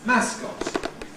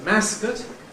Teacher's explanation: you can have a strong [ɒ] ‘mascot’ [ˈmæskɒt] or a weak [ə] ‘mascot’